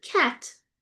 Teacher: So, for example, if you say the word cat, um you don't get a burst at the end as you would if it was at the um beginning of the word